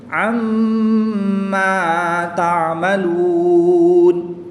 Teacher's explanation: میم مشدد میں غنہ کر کے پڑھیں گے